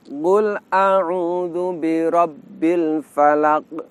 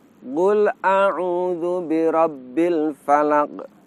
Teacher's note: Dari segi suara, ternyata ketika kita mengucapkan qaf, suara kita tertahan, tidak terlepas. Inilah sifat yang disebut dengan istilah syiddah atau mengucapkan huruf dengan suara tertahan.